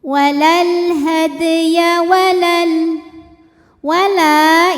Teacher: Walal hadya walal wala ini sama kayak yang tadi kalau berhenti panjang mad thobi'i karena ada alif didahului fathah ya tapi kalau wasal jadi pendek madnya gugur taklus bil hadf karena pertemuan dua sukun sukun pertama alif sukun kedua lam sukun sukun bertemu sukun tidak bisa dibaca sehingga sukun pertama dilepaskan jadi kalau wasal pendek A alif lamnya dinamakan dengan alif lam qamariah.